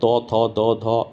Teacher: ত, থ, দ, ধ এগুলো দাঁত দিয়ে উচ্চারণ হয় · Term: দন্ত